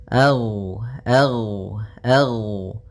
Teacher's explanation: ghain termasuk salah satu sifat huruf yang dia adalah sifat rakhawah yang di mana suaranya mengalir. Ag. Nah, tapi dia juga termasuk sifat huruf yang dia sifatnya adalah jahr.